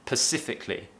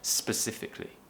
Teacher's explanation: Lots of people, when they're talking fast, they'll miss the S at the beginning. Natives do this, and they might pronounce it as pacifically instead of specifically.